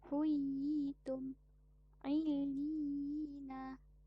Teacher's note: Contohnya, 2 huruf ya yang satu dibaca sukun atau mati dan yang satu lagi sebelumnya dibaca kasrah serta bertasydid. Kadar harakat bagi mad ni ialah 2 harakat. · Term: mad tamkin